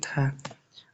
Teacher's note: दंत वर्ण दंत वर्ण दंत व महाप्राण घोष व्यंजन वर्ण का उदाहरण है ध